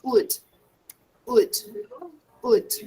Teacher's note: We don't pronounce the L. The L is silent. So we say would, would, would, okay?